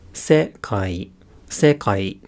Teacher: Whereas in Japanese, if we have a word like sekai, which means the world, it's not that there's stress on that initial accent, it's that there's a higher pitch on that accent. So it's sekai, sekai, high, low, low.